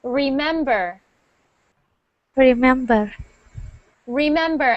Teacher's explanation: keep that r that tongue down for the last R of the word remember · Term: R sound